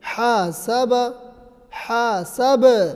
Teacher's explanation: چونکہ با حروف قلقلہ ہے اس لیے آواز کو لوٹا کر پڑھیں گے